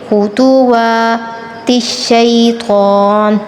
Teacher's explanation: طا پر ہم نے تفخیم کرنی ہے